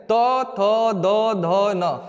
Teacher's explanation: जिन वर्णों का उच्चारण करते समय ऊपर के दांतों से जीभ का अगला भाग स्पर्श होता है उन्हें हम लोग दंती व्यंजन कहते हैं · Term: दंतीय व्यंजन